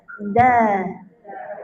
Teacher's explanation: Hujung lidah sentuh belakang yang tempat pengikat gigi dekat er gigi kapak tu kan belakang dia tu ada pengikat gigi. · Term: huruf dal